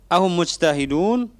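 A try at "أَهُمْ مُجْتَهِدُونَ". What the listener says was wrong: Hidupkan nunnya. Ahum mujtahiduna.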